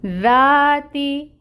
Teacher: ایروم، ذا الف سے پہلے ذال کے اوپر فتحہ کی حرکت، الف مد کا رول ہو رہا ہے، الف مد کی مقدار ہوگی 2 کاؤنٹس، تو ذا کو ہم 2 کاؤنٹس لمبا پڑھیں گے۔ تا ہے، تا کے نیچے کسرہ زیر کی حرکت 1 کاؤنٹ۔